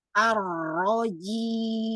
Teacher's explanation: untuk ro gak ada gerakan bibir ya bibirnya jangan sampai dimajukan arro ro yang dibuka rahanya. Kemudian lidah yang aktif, lidah ee depan digetarkan, kemudian lidah belakang dinaikkan, gitu ya.